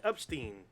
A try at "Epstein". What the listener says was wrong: There's not a U in there. What the fuck? You said Epstein. There's an E there. Okay, but you said You said Epstein or Epstein. Epstein or Epstein, whatever. U in the beginning.